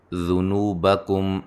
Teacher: میم ساکن کا اظہار ہے، غنہ نہیں کریں گے